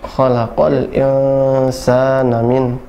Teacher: Nah, in-nya ditahan 2 harokat. Insa, ditahan 2 harokat, diikhfakan. Sa-nya dipanjangkan 2 harokat juga.